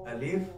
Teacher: अलिफ मुंह के खाली हिस्से की हवा से अलिफ अदा होता है मतलब जुबान दाए बाए कहीं नहीं जाती कोई दा दांतों को